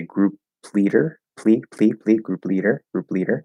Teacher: so the p and the l they can overlap uh they can become a cluster · that p uh it's not going to be aspirated